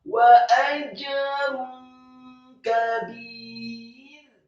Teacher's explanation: Hukum bacaannya adalah marfu tanwin atau dhammah tanwin bertemu dengan huruf kaf, dibaca ikhfa samar-samar